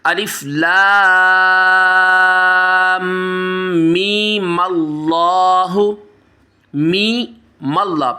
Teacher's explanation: پہلے میم کو کم کھینچ کے میم کو ڈائریکٹلی لام کے ساتھ ملانا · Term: وصل